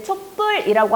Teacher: 촛불이라고 하면서 뒷말 된소리로 났어요